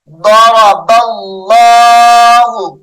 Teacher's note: اس میں جلالت اللہ کلام موٹا کر کے پڑھیں گے